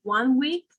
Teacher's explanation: The N sound will become an M sound.